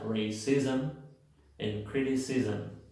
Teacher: Si se dan cuenta, aunque no tengo una schwa, se mete la schwa.